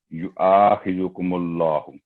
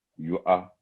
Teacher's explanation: ला यू आ, देखिए हमजा पर फतह है ज़बर, उसके साथ अलिफ जो कि हरूफ मद्दा में से आवाज़ लंबी करता है, ज़बर हो तो यू आ 2 सेकंड आवाज़ लंबी करेंगे